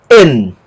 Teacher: como inicia a palavra, tem uma aspiração. No caso, a aspiração branda. Não altera o som da palavra. E termina com ni.